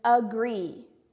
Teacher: you hear that schwa sound at the beginning